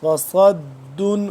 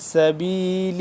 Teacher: صاد موٹا پڑھا جاتا ہے، سین باریک پڑھا جاتا ہے